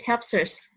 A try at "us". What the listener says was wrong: Because it's like you had a hard time saying us. Yeah, it sounded like ers. Yeah, you curled your tongue inside. You don't curl it because if you do that, it will sound like ers. Okay, us just flat. Us. It helps us.